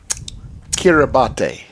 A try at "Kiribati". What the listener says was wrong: You see an S anywhere in there? And the T is also silent.